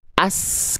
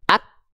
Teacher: As, ketika kita alirkan nafas, aliran suara ikut bareng mengalir. As, sedangkan huruf kaf, ak, ketahan dulu suaranya, baru mengalir, baru terpercikan nafasnya.